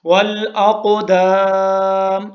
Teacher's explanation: اقدام کے قوف ایک تو اس کو موٹا پڑھا جائے گا اور قوف کے اوپر قلقلہ ہے، تھوڑا ہلا کے پڑھا جائے گا